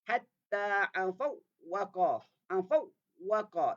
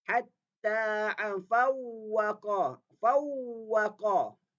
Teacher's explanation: Dengar macam ada dengung sikit. Tapi sebenarnya itu bukan dengung, itu adalah suara yang terlepas.